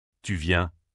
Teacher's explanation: Intonation qui monte à la fin